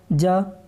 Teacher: जा जो है आपका महाप्राण ध्वनि नहीं है